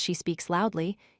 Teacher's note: in the sentence she speaks loudly, you stress the word loudly to show how she speaks. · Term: stressing adverbs